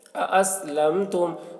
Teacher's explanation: میم ساکن کے بعد تا ہے، یہاں پر اظہار شفوی ہوگا، یعنی میم کو ظاہر کر کے جلد پڑھیں گے